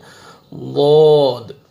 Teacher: پڑھیں گے ضاد ضاد داڑ زبان کے سائڈ پہ آپ نے داڑیں جو ہیں وہاں پہ آپ نے زبان کو لگانا ہے اور موٹا کر کے پڑھنا ہے